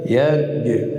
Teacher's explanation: به جیم، به خاطر که جیم ساکن است و جیم از حروف شدت هست قلقله میشه. یعنی شدت وقتی که حرف شدید است که صدا را قطع میکنیم مجبور هستیم که صفت قلقله را به کار ببریم تا شنیده شود